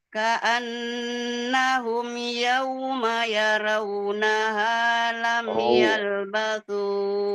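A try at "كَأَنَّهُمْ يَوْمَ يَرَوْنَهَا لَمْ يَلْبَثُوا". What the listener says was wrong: Bukan raw. Bukan terlalu cepat.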